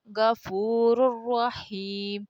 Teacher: جب حروف را یا لام آئے ان میں سے نون کی آواز اگلے حرف میں مل جاتی ہے مگر ناک سے آواز نہیں نکلتی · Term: ادغام بغیر گننے کے ساتھ